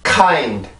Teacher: K 발음은 혀의 뒷부분을 이용해서 연구개를 막아주는데, 이때도 마찬가지로 그 연구개를 막아주는 혀의 힘을 더 강하게 눌러줌으로써 내가 공기의 힘을 강하게 만들어주는 거예요.